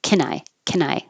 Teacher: can shortens to just can so you won't hear the vowel a